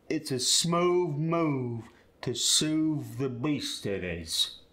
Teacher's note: For the medial and terminal voiced TH, you're going to replace it with a V.